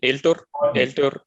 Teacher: you can reduce your exaggerated A a little bit. So I mean shorten it